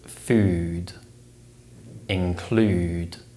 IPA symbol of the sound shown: uː